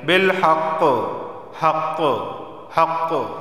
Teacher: क़ाफ़ हुरूफ़ क़लक़ला में से है तो जब यहाँ पर वक़फ़ करेंगे तो आवाज़ मखरज से टकराएगी